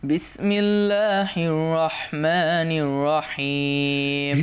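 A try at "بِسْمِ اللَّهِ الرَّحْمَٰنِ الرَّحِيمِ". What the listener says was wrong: হিরটা clear হলো না, হির, হা, হির, হির, হ্যাঁ, হির যেন না হয়।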